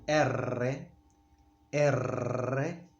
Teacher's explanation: We place the tongue. We take it up onto the middle of the hard palate, place it there and make it roll.